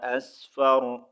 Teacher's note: یہاں پر وقف کی صورت میں را کو ہم نے ساکن کرنا ہے. ٹھیک ہے، یہاں پر آیت کمپلیٹ ہو رہی ہے، کمپلسری سٹاپ ہے.